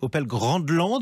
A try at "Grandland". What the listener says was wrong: Grandland, il n'y a pas de D, c'est de l'allemand. Donc on dit Grandland. Et c'est pas du Grandland, même s'il est très grand.